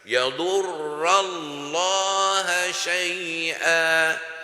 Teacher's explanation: le mot Allah prononcé plein à la bouche